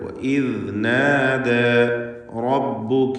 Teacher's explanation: റാഇന് തഫ്ഖീം കൊടുക്കണം, തടിപ്പിച്ച് റാ ഉച്ചരിക്കുക